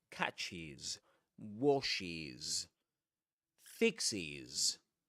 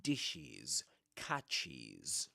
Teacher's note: But yes, when you've got a word ending in ch, sh, x, or double s, the the spelling in the present simple, in the present simple, you add es to the verb at the end. And that es is always pronounced as is.